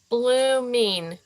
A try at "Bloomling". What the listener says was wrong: Said Bloomling. There's an L in the middle.